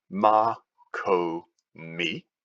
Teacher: Ma, ko, mi, 3 syllables. Mi is the tonic, the stressed syllable. Ko is 1 before the stress. Ma is 2 before the stress.